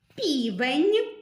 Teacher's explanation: звук н ми можемо вимовляти м'яко І наприклад у словах півень тоді це М'який приголосний звук ні